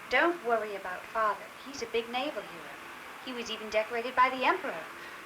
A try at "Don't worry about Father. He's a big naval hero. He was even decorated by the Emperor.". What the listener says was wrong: No, go down on the Emperor. He was even decorated by the Emperor.